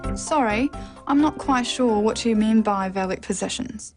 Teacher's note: The final example is a statement, so a falling tone is used.